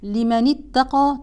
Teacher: تسقط همزه الوصل ونقرا من النون المكسوره الى التاء المشدده